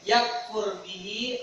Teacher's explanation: Yakfur bihi, ra-nya ra mufakhamah, tafkhim ra tebal